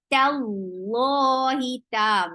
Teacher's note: Make sure you keep ta light, but lafz jalala will be heavy because you found fatha before it.